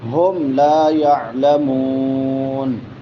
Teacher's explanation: یعلمون واو ما قبل ضمہ ہے تو یہ واو مدہ ہے، اس کو لمبا کر کے پڑھیں گے